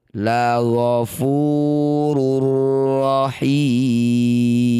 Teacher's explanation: Cara bacanya bunyi dhammah tanwin masukkan langsung pada huruf ro tanpa dengung. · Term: idgham bila gunnah